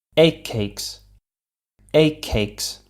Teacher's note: becomes a k as well listen egg cakes a cakes again it sounds like a double k sound the first of which is not released while the second one is · the first k in cakes is said, and then the t becomes a k as well.